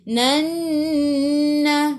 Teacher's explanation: Nun ada sabdu tekan ke dalam nun dan dengan 2 harakat wajibul gunnah